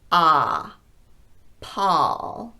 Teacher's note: On pawl, we're doing that ah sound. The lips are not rounded, the tongue is low, and the jaw is dropped.